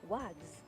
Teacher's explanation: The point is that you know that even though you think of an s, it's actually said z.